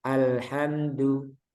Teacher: Jadi dalnya jangan sampai keluar udara.